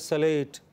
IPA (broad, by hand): səle:t